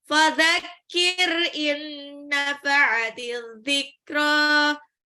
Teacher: Jadinya nun itu kayak lebur tapi ditahan. Ada gunnahnya. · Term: idgham bil gunnah